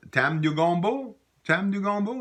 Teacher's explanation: it's just saying you like gumbo but with that rising intonation